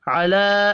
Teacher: علی چھوٹی مد کو 3 الف کے برابر کھینچ کر پڑھیں گے